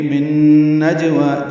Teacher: من نجوا میں نون ساکن کے بعد نون آنے کی وجہ سے ادغام ہے، غنہ کریں گے. من نجوا جیم ساکن پہ قلقلہ ہے، واو کو دو حرکات لمبا کریں گے.